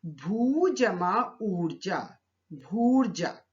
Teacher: भू शब्द का अंतिम वर्ण है दीर्घ ऊ और ऊर्जा शब्द का प्रथम वर्ण भी है दीर्घ ऊ, तो ऊ जमा ऊ मिलकर दीर्घ ऊ में परिवर्तित हो गया